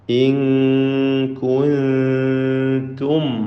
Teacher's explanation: രണ്ടും ഇഖ്ഫ ഹഖീഖി നൽകി അവ്യക്തമാക്കി മണിച്ചുകൊണ്ട് ഉച്ചരിക്കേണ്ടതാണ്. ഇൻ കുൻതും, സാക്കിന മീമിനെ ഇൽഹാർ ഷഫവി നൽകി മണിക്കാതെ വെളിവാക്കുക.